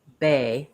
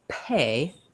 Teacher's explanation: if I say bay, I feel maybe a tiny bit of air come out. When I say pay, you can hear there's a burst of air that comes out.